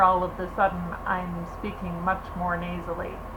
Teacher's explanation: the sound is now reverberating through my nasal sinuses, my nasal cavity, instead of here in my mouth, which is what it does for English, okay?